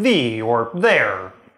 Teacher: no version of French has that [ð] sound that you get in English in words like [ði] (the) or [ðɛɹ] (there)